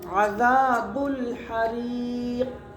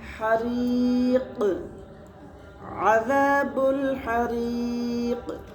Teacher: یہ جو آواز آئی لوٹتی، اسی کو قلقلہ کہتے ہیں